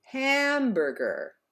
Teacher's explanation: in the word like hamburger, the first syllable is stressed, ham, therefore we stretch out that vowel. Hamburger.